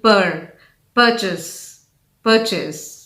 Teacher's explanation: with a stress on the first syllable